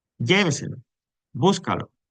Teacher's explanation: la sílaba tónica Es la anterior a la antepenúltima es decir empezando desde la última sílaba la cuarta silaba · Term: sobreesdrújulas